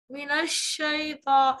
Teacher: शीन की आवाज पूरी मुंह में भर के अदा होगी